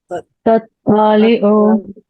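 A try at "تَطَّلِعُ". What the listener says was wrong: थोड़ा सा तो की कम करो, मतलब वो मत की तरह लग रहा है।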